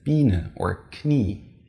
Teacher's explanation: IE results in a very long E sound, as in Biene or Knie.